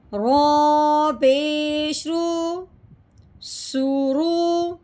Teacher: رو کو ہم نے موٹا کر کے پڑھنا ہے، پر کر کے پڑھنا ہے۔ رو کے اوپر پیش ہو یا زبر ہو اس رو کو موٹا کرتے ہیں